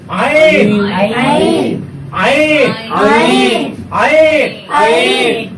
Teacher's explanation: এই হরফটা চিকন হবে, শ্বাস বন্ধ হবে এবং এটা মাকরাজ উচ্চারণ করতে হবে মাকরাজ 2 অনুযায়ী।